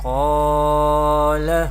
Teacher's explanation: This is the letter of madda because alif is sakin here and there is zabar before alif sakina, so there is alif madda rule is happening. And also qaf is a mustaliya letter and we will pronounce it with heavy voice or thicker voice, and we know we pronounce letter of madda with stretching up to one alif or two harakat.